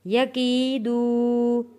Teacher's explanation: واو ساکن سے پہلے پیش ہے، یہ بھی حروف مدہ ہے، کھینچ کر پڑھنا ہے ہم نے۔